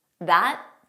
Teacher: So you just don't press out that final T